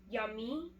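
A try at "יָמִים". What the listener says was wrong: Yamim. Finish it.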